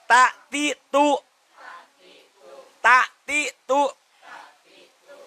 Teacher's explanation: ujung lidah bertemu dengan pangkal gigi seri atas. Ini muncul ta.